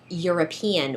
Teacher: European, which begins with the letter E, but the sound is actually Y, which is considered a consonant sound